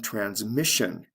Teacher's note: the stress is right before the t-i-o-n ending